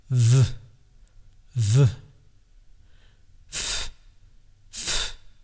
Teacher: the lower lip contacts the upper teeth and you press air through it. Just try it. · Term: labiodental consonants